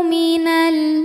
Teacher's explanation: alif lam yang menghadapi huruf qamariah yaitu huruf hamzah maka lam sukun dibaca dengan jelas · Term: izhar qamari